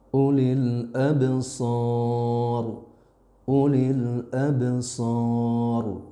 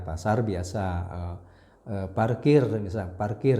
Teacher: Ro-nya itu tebal, berbeda dengan bahasa Indonesia gitu ya. Kalau bahasa Indonesia kan ro-nya biasa saja, misalkan kata-kata pasar ya, pasar biasa, parkir misalnya, parkir ya.